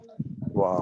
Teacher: ওয়াও উচ্চারণে ঠোঁট দুটোর সংস্পর্শ হবে না, জাস্ট বাতাস ওয়া, থেকেই গোল হয়ে উচ্চারিত হবে ওয়াও।